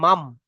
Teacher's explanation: নুন সাকিন কে মিমের দ্বারা পরিবর্তন করে পড়তে হবে